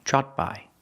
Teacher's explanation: the Ed makes a t sound but it's a stop T so you don't really hear it